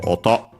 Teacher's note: can also be used for noise technically. Actually accented on the last syllable, so oto. So various sounds, noises. · actually accented on the uh last syllable